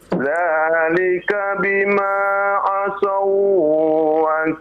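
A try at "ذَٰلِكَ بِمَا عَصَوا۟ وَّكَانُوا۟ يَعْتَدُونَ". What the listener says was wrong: Nah, coba perhatikan Pak, ya. Asau tidak boleh ditahan lama-lama, ya Pak, ya. Tidak ada idghamnya ya, tidak ada gunnah ya. Idgham saja tapi tidak gunnah ya. Dzalika bima 'asaw wa kanu ya'tadun.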